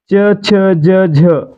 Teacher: च चा गट कधी असतो जेव्हा त्याला य जोडल्यासारखा उच्चार होतो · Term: तालव्य